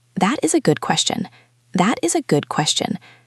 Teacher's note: That sounded very flat and a bit bored.